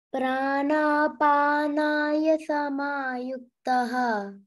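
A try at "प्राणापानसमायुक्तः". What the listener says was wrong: Pana, there is no ya after na. Pranapana samayuktah.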